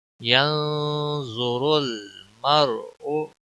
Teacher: ضا کو بھی موٹا پڑھیں گے، را کے اوپر پیش ہے اس کو بھی موٹا پڑھیں گے، اور را ساکن سے پہلے زبر ہے اس کو بھی پور پڑھا جائے گا.